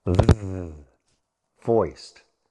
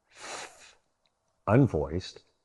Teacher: Place your hand on your throat and compare these two sounds: /TH/ unvoiced versus /TH/ voiced. You feel the vibration in your throat? You feel it with the second sound? That's the voiced TH.